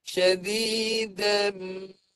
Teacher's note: Mim yang mati di dalamnya tu dia dibunyikan, kita kena dengungkan panjang. Panjangkan makhraj mim itu sebanyak 2 harakat.